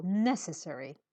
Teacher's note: Put the stress on the first syllable.